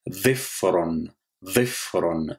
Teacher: le ra, il est roulé comme le R en espagnol. Donc ça fait dhifron, dhifron, qui signifie un angle.